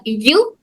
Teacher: زبان کا درمیانی حصہ تالو کے درمیانی حصے کو ٹچ کر رہا